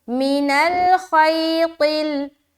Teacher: اور یہاں پر خی میں، یہاں پر پھر یا لین ہے، نرمی کے ساتھ ادا کریں گے